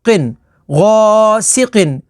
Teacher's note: قاف حروف مستعلیہ میں سے ہے تو اسے پر یعنی موٹا پڑھیں گے